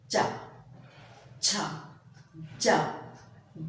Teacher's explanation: इनमें स्पर्श भी है और स्पर्श के बाद अपने उच्चारण अवयव अपने स्थान से हटकर उच्चारण स्थान और उच्चारण अवयव के बीच के जो स्थान बचता है वहां से श्वास घर्षण के साथ बाहर आती है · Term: स्पर्श संघर्षी